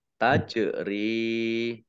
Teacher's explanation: Jim sukun bacaan qolqalah dibaca memantul ya ditampakkan pantulannya · Fathah berdiri, mat tobi'i, dibaca panjang 2 harokat. Tajri, jim sukun, bacaan kolkolah, dibaca memantul, ya, ditampakkan pantulannya. Tajri, rok kasroh, ya sukun, mat tobi'i, panjang 2 harokat.